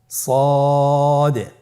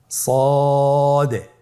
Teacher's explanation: সদ হরফের মাখরাজ কোন জায়গা থেকে উচ্চারিত হয় আপনারা স্ক্রিনে দেখতে পাচ্ছেন। জিহ্বার আগা, সামনের নিচের 2 দাঁতের পেট ও আগার সঙ্গে লাগিয়ে উচ্চারিত হয়